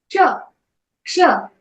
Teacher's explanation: बघा, हा क्ष क्ष असा उच्चार करायचा. जिभेच्या खाली मागील भाग टाळूला लावून हा उच्चार केला जातो.